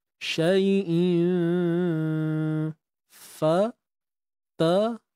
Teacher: Huruf ta ni memang tebal selamanya. Jadi waktu dia lantun pun kena tebal. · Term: ta mati